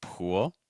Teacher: we have the oo sound plus dark l